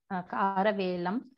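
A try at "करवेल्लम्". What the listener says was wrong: Atra velam na velam. It's a double word. Karavellam.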